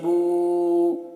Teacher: با پیش بو، با الٹا پیش بو۔ اب اسے کھینچ رہے ہیں کیونکہ الٹا پیش واو مدہ کی طرح ہے تو ایک الف کے برابر کھینچیں گے۔